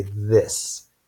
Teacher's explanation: notice that your vocal cords aren't vibrating so its voiceless but when you say the th sound in this you will maybe notice that your vocal cords are vibrating so it's voiced